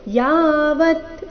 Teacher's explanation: ಯ ದೀರ್ಘ ವ ನಂತರ ಅರ್ಧ ತ